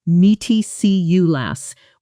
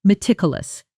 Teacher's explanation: Because English learners often either add an extra syllable or misplace the stress, saying something like "meaty see you lass" when it should be "me tick you lass." Stress firmly on that second syllable.